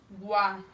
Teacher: E o U, guá, a gente não escuta muito, né? É uma semivogal.